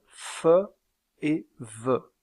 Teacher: il y a un resserrement du passage de l'air avec la lèvre inférieure contre les dents. Aussi, appelle-t-on ces deux constricives des labiodentales.